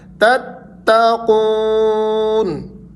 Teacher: تا کو تا سے ملانا ہے شدت کے ساتھ